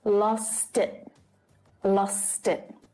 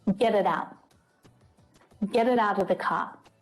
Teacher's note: the word it is pulled into the word before it because it ends with a consonant